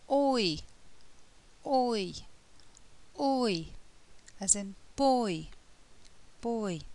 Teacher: The lips begin rounded, o, and they move to spread, I, oi. And the tongue moves from the back of the mouth to the front of the mouth. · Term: diphthong